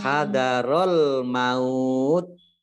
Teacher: ini agak tak sukunnya ini agak ada suara S-nya sedikit ya.